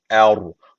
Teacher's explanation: B harfi cezm almış kalkale tecvidi var hafif bir vurguluyoruz B'yi boğazdan me bakın Burada da uzun medden sonra küçük Elif gelmiş